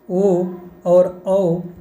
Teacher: कंठ और ओष्ठ से मिला के बोले जाते हैं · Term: कंठोष्ठ